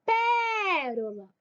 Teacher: É a antepenúltima sílaba que é forte. Se eu contar do final para o começo, é a terceira sílaba, ó. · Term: proparoxítonas